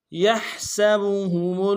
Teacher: سین کی سیٹی باریک ہوگی